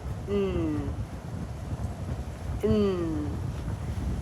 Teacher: my air my breathing is not coming through my mouth it's coming through my nose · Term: nasals